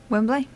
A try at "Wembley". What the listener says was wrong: Yeah, all northerners do this. You add an extra syllable. Wembley. You said Wembley. You said Wembley. It's Wembley. And you always put an extra syllable.